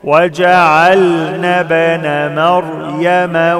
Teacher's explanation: كلمة ابن الألف لا تنطق، ما قولش وجعلنا ابن، خطأ.